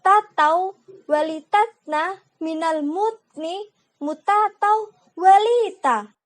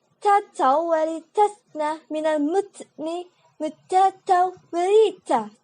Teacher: Huruf ta itu harus jelas. Jadi nggak boleh pakai ca.